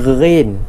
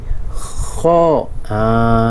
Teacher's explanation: Menekan suara di permulaan halqum kita tekan sikit